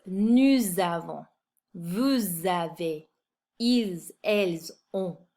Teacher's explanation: I'm pronouncing the S at the end of these words because they're followed by a vowel. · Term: liaison